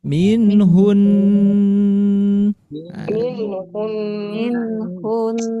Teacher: asa ayakunna khairam minhun lanjut Nah, jadi ketika kita membaca di sini ada nun tasdid di akhir kalimat atau diwaqf maka tidak dibaca minhun tetapi tahan dengungkan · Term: gunah musyaddadah